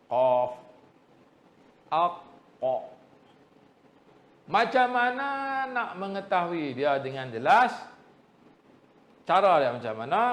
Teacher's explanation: pangkal lidah kita terangkat ke langit-langit lembut menyentuh anak lidah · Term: makhraj huruf qaf